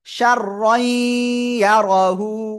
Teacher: তানবিন এর পরে ঈদগামে বা গুন্নার অক্ষর ইয়া, এজন্য আমরা গুন্নার সাথে মিলিয়ে পড়বো